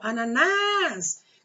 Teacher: Qual é a sílaba tônica? A sílaba tônica é o nas.